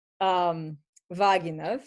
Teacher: So the stress is on the first syllable.